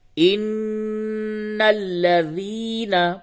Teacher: حمزہ نون زیر ان، نون لام زبر نل، انل، لام زبر لا، ذال یا زیر ذی، لذی، نون زبر نا، لذین، ان الذین، نون مشدد ہے یعنی نون کے اوپر تشدید ہے، اس پہ آپ غنہ کریں گے